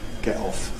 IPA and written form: ˈgeʔ ˈɒf (get off)